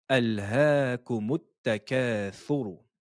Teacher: Ressortez la langue, posez-la sur les incisives supérieures et la lettre ro, prononcez-la de façon emphatique